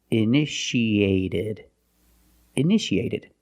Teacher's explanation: The second T is between vowels, so we pronounce it like a fast D.